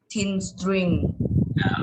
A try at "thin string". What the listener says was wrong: Okay, not tin, but thin, but it is correct. Thin string.